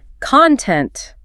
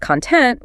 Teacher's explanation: Content with the stress on the first syllable is the stuff inside a box. But content with the stress on the second means you're happy and satisfied. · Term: Word stress